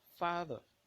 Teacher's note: there is a higher degree of force in pronouncing the first syllable in that disyllabic word. That therefore means that a stressed syllable is pronounced louder and longer with high pitch.